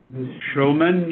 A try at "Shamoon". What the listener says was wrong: It's Shamoon, just the way it's spelled. There's no L in it.